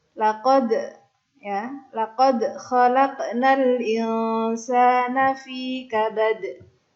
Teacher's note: Nah, karena mati maka dalnya berharokat sukun. Nah, maka dal yang berharokat sukun ini dia punya sifat qalqalah atau memantul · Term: qalqalah kubra